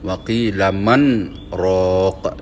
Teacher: Walaupun nun mati bertemu ra, nun tersebut tidak masuk ke dalam huruf ra. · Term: saktah